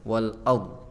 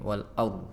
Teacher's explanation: Wal ardi dzatis sad', tadi ro-nya wal ar kurang tebal saja, wal ard ya. Jadi cara baca ro tafkhim agak lebih tebal, wal ard ya, agak maju sedikit bibirnya, wal ard ya.